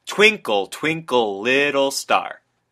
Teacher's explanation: all the stress syllables come first and the unstressed comes second the trochaic is meant to have a sort of rolling tune · As is pretty evident when you actually hear it out loud, Twinkle, Twinkle, Little Star. All of the stressed syllables come first and the unstressed come second. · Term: trochaic meter